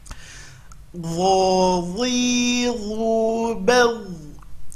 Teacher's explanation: Huruf dha sama makhraj dengan huruf dha, keluarkan ujung lidah, tapi ini huruf tebal, ya, huruf tebal.